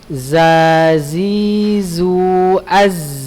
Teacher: Jadi huruf zai ini berada di makhrajul hurufnya ujung lidah pada posisi dua gigi seri bawah. Lalu suara keluar melalui celah di antara dua gigi seri atas dan bawah. Ya, jadi harus setipis mungkin ya antum untuk mengucapkannya.